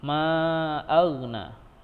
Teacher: huruf ghain itu bukan huruf qalqalah, jadi tidak boleh dipantulkan. Ma'agna, ada boleh age, harusnya ma'agna, harus tertahan dia.